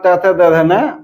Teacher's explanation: दंत पर आघात होने के कारण त थ द ध न